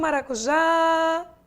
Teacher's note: Essa palavra maracujá, como você está vendo, ela tem a última sílaba como sendo sua sílaba tônica.